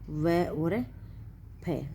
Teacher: इनका उच्चारण करते समय दांत और नीचे के होठ के मिलने से होता है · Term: दंतोष्ठ